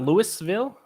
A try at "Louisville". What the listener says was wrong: Not Louisville. Definitely a silent S.